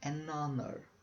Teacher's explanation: Nesta palavra, hour, de hora, o H não é pronunciado.